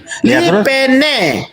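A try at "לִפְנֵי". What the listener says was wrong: Nah, betul, bukan lipene, livne karena ini nggak ada dagesnya di tengah. Ya ampun, ini nggak ada dagesnya. Kalau ada dagesnya baru dibaca P.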